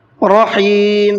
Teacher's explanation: را کے اوپر زبر ہے تو منہ بھر کے پڑھیں گے۔